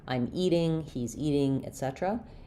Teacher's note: And here what you want to watch out for is that rather than having an N sound at the end, now we have the ng or NG sound at the end. So it's going to be stressed on the eat, first syllable, and eating, the T is between two vowels followed by an unstressed syllable.